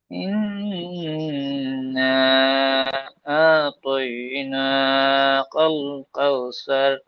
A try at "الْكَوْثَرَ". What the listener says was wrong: এখানে কল, কল টাইপের হয়ে যাচ্ছে, কাল। কাল।